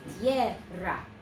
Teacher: the second syllable does have the rolled R if you can do it.